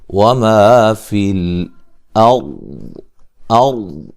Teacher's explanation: را کو موٹا ادا کریں گے، را ساکن سے پہلے زبر ہے